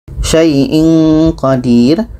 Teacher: tanwin bertemu qa, qa tidak termasuk huruf 8, maka ini dengung. Syai'in qadir, tanwin bertemu qa dengung.